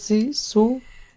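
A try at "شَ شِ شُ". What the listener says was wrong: না এটা কি শিন পড়তেছেন, আমি বুঝি না আপনার উচ্চারণ, একটু একটু বললে বলে পারেন, শা শি শু এটা তো শিন হবে, এটা সা হবে না।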